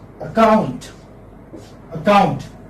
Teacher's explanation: There are two syllables. The second syllable is a stress.